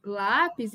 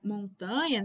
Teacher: Então, todas elas são paroxítonas porque a penúltima sílaba é tônica